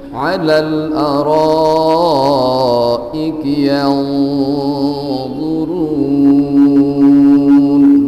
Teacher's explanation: nun sukun bertemu dengan dha, ikhfa hakiki, ada dengung ya, karena ada dengung dibaca dua.